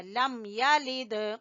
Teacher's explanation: یا کو چھوٹا پڑھنا ہے اور دال کے اوپر قلقلہ کرنا ہے